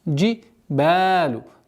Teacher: Долгота в размере двух огласовок фатха.